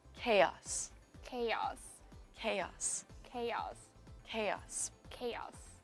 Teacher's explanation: I think uh the stress is on the first syllable